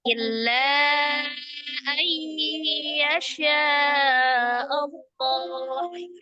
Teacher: Ada yang menyebutnya mad munfasil saja. Maka panjangnya la adalah 4 atau 5 harokat ya.